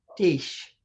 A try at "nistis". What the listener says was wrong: I would say nistis. I wouldn't have the H sound in it. Nistis.